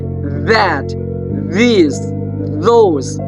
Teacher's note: if I say that, this, those, there's a vibration in my vocal cord. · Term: voiced